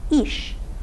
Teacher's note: front vowels unrounded here it is i